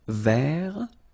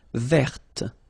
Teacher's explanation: masculine form, you don't pronounce the final T